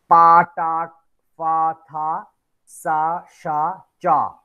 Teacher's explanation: When you pronounce, your vocal fold will not be vibrated. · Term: voiceless consonants